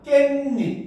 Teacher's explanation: 뒷말의 첫 소리 모음 앞에서 니은 소리가 덧나는 경우도 있죠. 그래서 베개와 이시 합쳐졌는데 베갯닙 이렇게 되는 거야. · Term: 니은 첨가